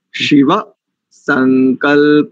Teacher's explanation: थोड़ा सा संकल्प को ठीक कर लीजिए, इसमें दंत्य सकार है